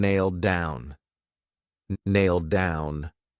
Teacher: So it's pronounced exactly the same as nail down, but if you say it together, that D is used for both. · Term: one D sound